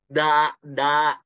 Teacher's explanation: Kalau da nggak hamas. Da itu jahar. Jahar itu apa? Dia nggak keluar napas.